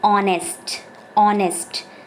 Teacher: H is silent in this word